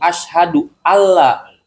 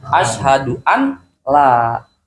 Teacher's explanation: Kan an la tulisannya ya. Nun sukun bertemu lam maka menjadi idgham bila gunnah. Maka dibaca tidak dengung